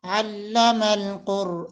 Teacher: قاف اور را دونوں موٹے حروف میں سے ہیں ان کو موٹا کر کے پڑھنا ہے